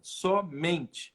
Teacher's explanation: Quando eu transformo só em somente, ó, só era a tônica, somente. O men ficou mais forte, não ficou?